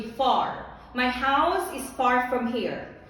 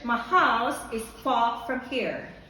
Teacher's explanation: for americans they pronounce the r